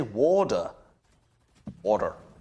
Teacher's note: americans just sub in a d everywhere they say water